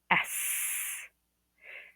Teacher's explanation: the S sound, which is unvoiced. When you feel your vocal cords, there's no no vibration. · When you feel your vocal cords, there's no vibration. That would be unvoiced, as in S. The Z sound is voiced.